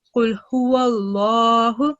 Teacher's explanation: So when you were reading this word over here, Qul huwallahu, the lam sound over here is supposed to be thick and heavy. As you can see, this is lam mushaddad, and before that there is a fatha stroke. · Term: majestic lam